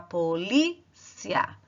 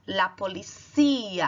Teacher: Enquanto em português você fala a polícia, em espanhol você vai falar la policía. A sílaba tônica está no cia.